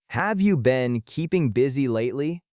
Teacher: In casual slow English, the H in have can become very quiet, and the words contract to sound like "hoov ya" or "av ya." The rhythm is fast on have you been, and then slows down on keeping busy.